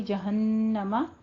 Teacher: جہنم نون کے اوپر شد ہے، غنہ واجبہ